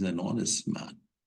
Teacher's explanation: H is mute it is silent it is not pronounced it is not accented remember it please so the sound starts from o and O